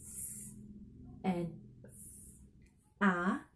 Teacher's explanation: it's most open and back vowel that is possible to make